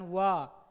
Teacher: वाह का उच्चारण दंतोष्ठ से होता है, दांत और होष्ठ दोनों से होता है। दांत और होठ क्या होता है, दोनों से होता है, ठीक है।